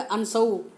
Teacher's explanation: ये शंकर वाला शय नहीं है, तालव्य शय नहीं है, दंत्य से है